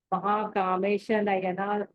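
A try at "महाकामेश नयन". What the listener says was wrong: ఇక్కడ కూడా నయన దీర్ఘం లేదు కదా. ఇక్కడ బ్రేక్ చేస్తున్నప్పుడు మీరు రసం ఉన్నది దీర్ఘం చేస్తున్నారు, అది రాకుండా చూసుకోండి.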